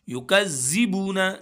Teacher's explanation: वाव मद्दा है, बू को हम एक अलिफ के बराबर खींचेंगे